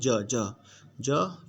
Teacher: ज का उच्चारण स्थान है ज तालु के साथ हो रहा है ज। देखिए जब ज का उच्चारण करेंगे तो आपका तालु जो है ज के साथ सटेगा, तालु जीभ के साथ सटेगा